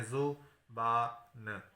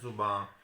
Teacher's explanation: جب ہم اس کی نون کو نون غنہ بناتے ہیں تو پھر ایک آواز کم ہو جاتی ہے. اب آوازیں برآمد ہو رہی ہیں، زبان، ن جو ہے وہ ختم ہو گئی.